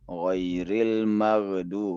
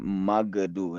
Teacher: Huruf ghain ini hendaknya jangan sampai terpantul sebagaimana huruf qalqalah ya. Ghairil maghdu bukan magdu ya.